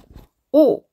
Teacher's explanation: 입을 동그랗게 말고 앞으로 좀 내밀면서 오므린 오! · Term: 오 발음